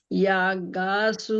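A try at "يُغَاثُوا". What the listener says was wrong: না, ইয়া কেন? ইউ ইউ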